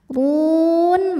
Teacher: harfulin karena ada Ya Sukun sebelumnya fathah dibacanya lembut ilaihi tuhsyarun huruf ro dibaca secara tafkhim karena berharakat damah dibacanya tebal